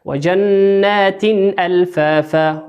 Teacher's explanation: جنات النون مشددة مقدارها حركتين، والتاء مكسورة بتنوين، وأتى بعده حرف الهمزة، والهمزة من حروف الإظهار